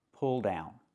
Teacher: We have the sound like in good book, plus the dark L in the word pull.